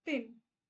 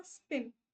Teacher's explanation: क्यों? क्योंकि जब आप प बोलते हो तो एक हवा पास होती है।